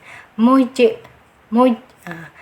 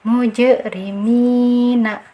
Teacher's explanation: Ditahan dulu ya, baru diqalqalahkan atau dipantulkan.